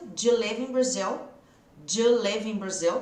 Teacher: O do com you vai virar j. Junta aí, j.